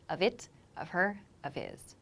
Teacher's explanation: the F becomes a quick V sound almost and we're sort of just releasing air to make the H sound